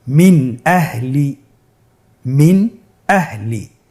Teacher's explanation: আমরা জানি হামজা ইজহারের হরফ। তাহলে আমরা এখানে নুন সাকিনকে স্পষ্ট করে পড়ব, গুন্না ছাড়া পড়ব।